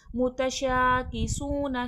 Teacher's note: मुतशाकिसून, शीन में तफशी फैलाव है शीन की आवाज़ में, और शीन पे खड़ा ज़बर है, खींच के पढ़ा जाएगा। सू, सीन वाव पे सू, सख्ती सीटी के साथ सीन पढ़ा जाएगा, और सू में वाव मद्दे खींच कर।